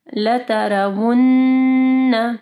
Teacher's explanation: نون مشدد ہے، ٹھیک ہے، کامل غنہ ہوگا